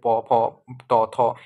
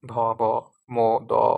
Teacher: যেগুলো কম্পন কম সেগুলোকে আমরা বলি অঘোষ ধ্বনি। আর ঘোষ ধ্বনিতে কি হয়? অপেক্ষাকৃত কম্পন বেশি থাকে।